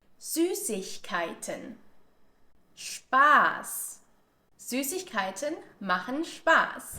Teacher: the sharp S is pronounced as a harsh S sound, or we also call this the unvoiced S sound, and that's because we don't need our vocal cords in order to produce this sound.